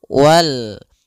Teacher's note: alif lam qamariah itu lamnya dibaca dengan jelas